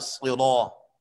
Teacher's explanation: بات سنیں جی، یہ سویاً علی صراط، صاد بھی موٹا پڑھا جاتا ہے کیونکہ یہ حرف مفخم ہے، اور را بھی یہاں پر مفخم پڑھی جاتی ہے کیونکہ را پر زبر ہے، اور جب حرف مفخم کے بعد وہ حرف جو پر پڑھا جاتا ہے اس کے بعد الف مدہ آیا ہو تو اس میں تفخیم اعلیٰ درجے کی ہوتی ہے۔